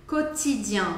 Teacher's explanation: a letra t em francês ela vai ser feita com pontinha da língua